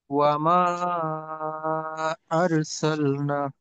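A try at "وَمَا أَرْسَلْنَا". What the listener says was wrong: হুম, না, নাতেও কিন্তু একটু টান। না।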